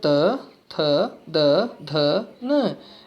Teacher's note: इनका उच्चारण करते हैं तो हमारी जिह्वा दांत से टकराकर वायु बाहर निकालती है। तो दंत का मतलब है जो दांत से टकराकर जिनकी वायु बाहर आती है। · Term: दंत वर्ण